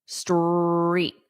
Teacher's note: You want to hear the strong R in street. The st is fast.